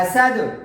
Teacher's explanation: حا زبر حسین زبر سا، حسد زبر دا، حسد وقفا حسد. وقفا اس دال پر قلقلے کے ساتھ وقف کرنا ہے اور زبر کو ہٹا دینا ہے، ریموو کر دینا ہے اور دال کو ساکن کر دینا ہے.